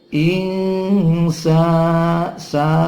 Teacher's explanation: dua ketuk ya, seperti mad tabi'i, ada harokat berdiri di situ pengganti alif